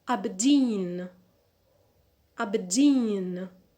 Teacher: the stress is on the last syllable and we have two unstressed syllables before the primary so we need to add the secondary stress